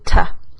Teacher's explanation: Pero una palabra como to, yo lo que voy a hacer por lo general es cambiar la o, esa to, a. Entonces voy a decir ta. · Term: schwa